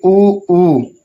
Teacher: ऊ को उच्चारण जब भी हम कर रहे हैं तो हमारे जो ओठ हैं वो आपस में स्पर्श कर रहे हैं